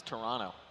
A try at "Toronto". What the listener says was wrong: Toronto. You're pronouncing the second T just like Phi. Toronto.